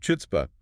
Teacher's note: English speakers just drop the rasp, turning the C completely silent and leaving us with just a standard H sound.